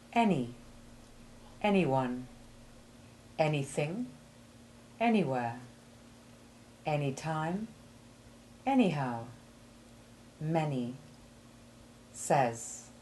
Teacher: the sound for short a3 is not made as far back in the throat as it is for short a1 you feel the air against the top of your palate only